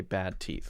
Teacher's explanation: sometimes when there's another thing right after it then you won't really hear the D because we're focusing on the first sound of the next thing okay for example bad let's say bad bad teeth okay let's